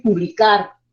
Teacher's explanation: Al decir publicar, ya tengo más acentuación en la última sílaba. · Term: acento prosódico